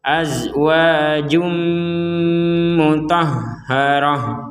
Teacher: Ini juga sama. Ada tanwin, ada dhammatain bertemu mim dimasukkan.